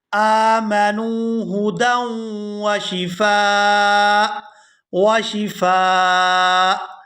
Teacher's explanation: اب اسی آیت میں دوسرے مقام پر دیکھیں کہ جہاں ہم وقف کریں گے آمنوا ہدی وشفاء، یہاں حمزہ کے بعد جو آپ توئیں دیکھ رہے ہیں یہ وقف لازم کی علامت ہے، اور جب ہم یہاں پر وقف کریں گے تو حمزہ کو کر دیں گے ساکن، فا کو الف مدہ کی وجہ سے کھینچتے ہوئے اس حمزہ ساکن کے ساتھ ملائیں گے. آمنوا ہدی وشفاء وشفاء، آخر میں حمزہ کی آواز جو ہے وہ کلیئر سے آنی چاہیے.